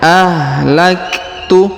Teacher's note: huruf Kaf berharakat sukun maka kita berikan hembusan tipis